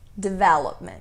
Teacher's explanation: com a ênfase a parte tônica né a sílaba tônica na segunda sílaba